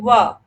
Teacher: जो निचले दांत हैं वो ऊपर के ओठों से सट रहे हैं